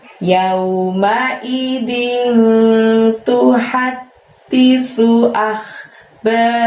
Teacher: kho sukun, maka keluarkan suara kamu dari tenggorokan bagian atas seperti orang ngorok ya. Ba-nya panjangnya 2, ro-nya pendek, lalu ha-nya juga panjangnya 2.